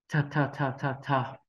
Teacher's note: Phụ âm T cuối cùng thì chúng ta đọc bật hơi giống như âm thờ